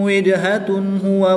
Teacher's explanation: جیم حروف کلکلہ میں سے ہے اور جب حروف کلکلہ ساکن ہو تو ان میں کلکلہ خوب ظاہر ہوگا، ان میں کلکلہ کریں گے۔ تنوین کے بعد ہا حروف ہلکی میں سے ہے تو یہاں پر اظہار ہوگا، تنوین کو خوب ظاہر کر کے پڑھیں گے۔